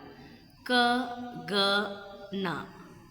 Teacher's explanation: Back of the tongue touches the soft palate, that is called velar.